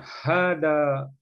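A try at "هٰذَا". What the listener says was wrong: Haza. Hanya dua harokat. Haza.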